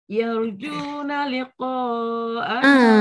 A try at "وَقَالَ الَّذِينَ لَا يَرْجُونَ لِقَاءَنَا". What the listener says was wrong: jangan yarju je bila ada perkataan la dia tak tinggal la tu